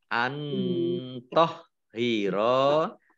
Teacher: nun sukun bertemu dengan huruf to, bacaan ikhfa, dibaca samar-samar